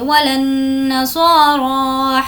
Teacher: لام کو نون سے ملائیں گے